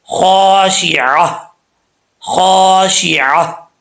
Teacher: خا کیونکہ حروف مستعلیہ میں سے ہے تو یہ فل موت پڑھا جائے گا